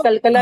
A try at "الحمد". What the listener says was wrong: उसमें जो है ना, हाँ अभी जैसे अब आपको मालूम हो गया کہ لام پر قلقلہ ہو رہا ہے تو آپ لام جیسے لام ادا کر رہے ہیں نا، تو لام پہ اپنے مخرج کو، آواز کو بالکل جما کر نکال. الحمد، اس میں قلقلہ، یعنی قلقلہ کہتے ہیں اردو میں جنبش کو. حرکت نہیں آنی چاہیے، وائبریٹ نہیں ہونی چاہیے آپ کی آواز، وائبریشن نہیں آنا چاہیے.